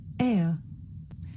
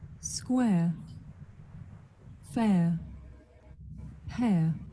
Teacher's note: This is a diphthong, a double vowel sound. The shape the mouth makes changes from the beginning of the sound to the end. It's pronounced air.